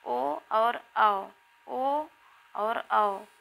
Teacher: ओ और औ कंठ और ओष्ठ से बोले जाते हैं